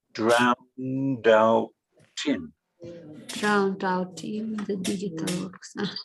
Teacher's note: the D joins with the O and the T joins with the I